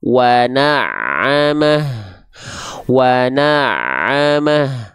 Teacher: Dirasakan betul-betul ain itu dari bagian tengah tenggorokan.